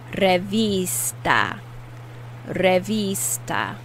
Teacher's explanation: Notice I'm putting more emphasis on the I, which is pronounced E in Spanish.